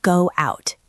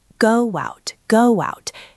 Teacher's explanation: We use the w bridge when the first word ends in a rounding vowel sound, like oo or o. When your lips are round like you are going to kiss someone, the natural sound to move to the next vowel is w.